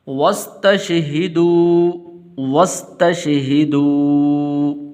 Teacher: یہ الف جو ہے واو کے بعد اس کو آپ نے لمبا نہیں کرنا